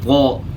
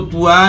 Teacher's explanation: طا کی ادائیگی میں آپ نے جو ہے ہونٹ استعمال نہیں کرنے، زبان اوپر اٹھے گی